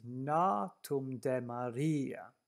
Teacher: to be aware that the stress is “NAtum de maRIa”